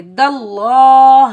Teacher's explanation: اللہ کے لام سے پہلے دال کے اوپر زبر ہے تو اللہ کے لام کو ہم موٹا پڑھیں گے، اگر زیر ہوتا تو ہم باریک پڑھتے۔